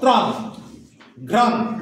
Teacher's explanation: ত্রাণ যখন উচ্চারণ করছি ত একটাই উচ্চারণ হচ্ছে, তয়ের সঙ্গে র